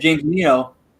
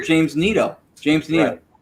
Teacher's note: No, his last name is Anito, and if you listen to it, the A is there. It's just real fast, so you hear the N more than the A, but it is there. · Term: drop syllable